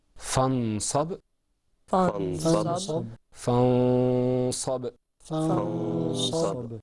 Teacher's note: something happened to the noon. It wasn't articulated completely. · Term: ikhfa